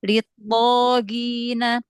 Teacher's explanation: Jadi jangan ada aliran suaranya, langsung litto, litto, ya. Ya, to itu punya sifat isti'la, punya sifat itbaq ya. Dan di sini to-nya berharokat fathah, setelahnya ada alif. Berarti tingkatan ketebalan yang pertama.